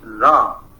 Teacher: high tone is basically loss of ha sound at word medial and final positions